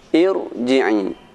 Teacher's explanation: huruf ra yang dibaca dengan tebal walaupun sebelumnya berupa huruf kasrah, yaitu pada huruf ra yang didahului dengan hamzatul wasl